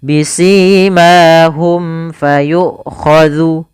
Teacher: Kemudian pada lafal bisimahum fayukhadhu, ada mim mati bertemu dengan huruf fa, maka ini kita namakan dengan bacaan izhar syafawi, yaitu suara huruf mim dibaca dengan jelas